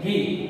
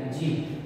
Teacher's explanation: ઘી તો આપણે ગુજરાતી ભાષામાં સૌરાષ્ટ્રીય બોલીમાં જી બોલાય છે જી અહીંયા આગળ ઘ જે છે ઘનું ઉચ્ચારણ થતું નથી અને